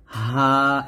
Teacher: আর এটা আমরা কন্ঠ শুরু থেকে পাতলা উচ্চারণ করব